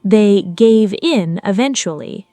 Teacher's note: Stress on in, not gave.